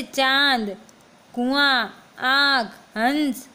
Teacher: इसका उच्चारण नाक और गले दोनों से होता है। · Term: अनुनासिक स्वर